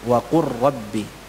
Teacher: Tulisannya wa qul rabbi disambung wa qur rabbi, lamnya hilang. Tinggal ra-nya bertasydid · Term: idgham mutaqaribain